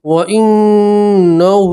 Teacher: ان کے اوپر تشدید ہے اس لیے گنہ کریں گے اور الٹا پیش میں بھی کھینچ کر پڑھیں گے۔